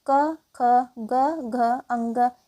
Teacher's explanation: क, ख, ग, घ, अंग इन सभी वर्णों के उच्चारण स्थान कंठ है।